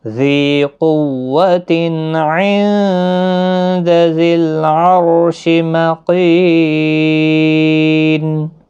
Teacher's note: ذی یا مدہ ہے، قوتن قاف حروف مستعلیہ ہے، پر پڑھنا ہے، تنوین کے بعد حروف حلقی کا عین ہے، اظہار حلقی ہوگا، تنوین کو ظاہر کر کے پڑھیں گے. نون ساکن کے بعد حروف اخفا کا دال آیا، اخفا حقیقی ہوگا. ذی العرش را ساکن سے پہلے زبر ہے، اس لیے را ساکن پور پڑھا جائے گا، مکین، کی یا مدہ ہے، نون ساکن ہوگا، وقف کی صورت میں 3 سے 5 الف کی مقدار کے برابر کھینچ کر وقف کریں گے۔